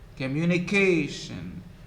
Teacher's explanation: The main stress falls on the penultimate syllable, the syllable before the last, on K. Communication.